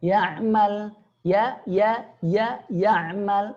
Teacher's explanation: sini perhatikan ya hamzah huruf Arab pengucapannya di pangkal tenggorokan huruf ain di tengah tenggorokan